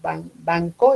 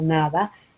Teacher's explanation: Cuando yo digo banco es una nasal velar, cuando digo nada es una nasal dental.